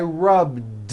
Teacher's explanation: all I did was add a voiced D sound at the end rub do it's not rubbed with an unvoiced t it's rubbed